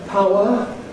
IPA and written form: ˈpaʊə (Power)